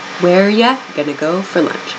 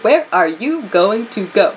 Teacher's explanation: So this where are you comes or reduces to where ya, where ya, where ya, and then going to go reduces to gonna go